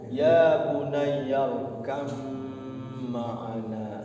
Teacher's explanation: masuk kepada mim harus dibaca dengung, masuk dengan dengung. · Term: idgham mutaqaribain